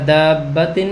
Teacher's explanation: الف مدہ کے بعد شد والا حرف بار ہے تو ہم نے الف مدہ پہ 3 سیکنڈ کی مد کر دی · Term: مد لازم